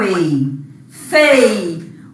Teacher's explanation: ditongo decrescente, a vogal aparece na frente da semivogal